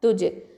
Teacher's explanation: துஜ் அப்படின்னு சொல்லும்போது கல்கலத்து சுகரா. ஓகேவா? லைட்டாக அசைக்கணும். துஜ். ஜ ஃபதா அலிஃப் சகீரா ஜ 2 ஹரக்கத்தை நீட்டணும்.